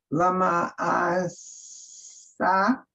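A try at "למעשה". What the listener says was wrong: And I would do it like lip, like not an ah, lima ase.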